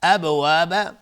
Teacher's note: ابواب با اینجا قلقله میخواد چون ساکنه